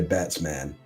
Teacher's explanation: when man is actually the second syllable of one word, it loses the stress because the first syllable gets stressed